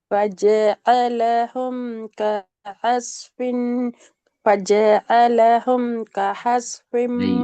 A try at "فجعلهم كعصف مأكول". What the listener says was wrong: ஐன் மாறுது. ஐன் ஹேக் மாறுது. ஹஸ்பின் என்று மாறுது.